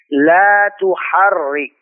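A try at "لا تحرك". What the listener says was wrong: Dan tuhar. Ini ra-nya tipis. Jangan tuhar. Tebal itu. Tuhar. Antum tarik sedikit. Tuharrik. Tuharrik.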